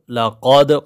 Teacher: قاف کو موٹا پڑھیں گے، دال پہ قلقلہ کریں گے